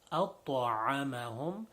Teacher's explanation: ta is one of the letters of qalqala, in which we must do a little bounce sound on the ta